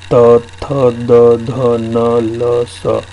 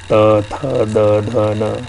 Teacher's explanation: देखो आपकी जीभ दांत से टकराएगी और ये शब्द निकलेगा त, थ, द, ध, न, है ना।